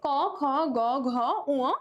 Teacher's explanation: যেসব ব্যঞ্জনধ্বনি উচ্চারণের সময় জিভের পেছনের অংশ উঁচু হয়ে আলজিভের কাছাকাছি নরম তালুর কাছে বায়ুপথে বাধা সৃষ্টি করে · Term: কন্ঠ ব্যঞ্জন, কণ্ঠ ব্যঞ্জন